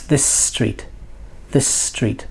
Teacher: look, two S's together. Is it this street? No, it's this street. This street. The S becomes longer.